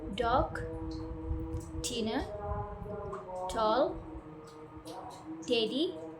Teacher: Your tongue touches the alveolar ridge and then release a burst of air while using your vocal cords.